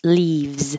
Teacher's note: this s sounds like a z cuz your voice has been on the whole time for leaves